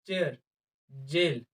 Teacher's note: एयर को stop करते हैं लेकिन रिलीज जो है वो सडन नहीं बल्कि स्लोली करते हैं · इसमें हमने स्टॉप तो लगाया है वॉइस को लेकिन छोड़ा हमने स्लोली है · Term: एफ्रीकेट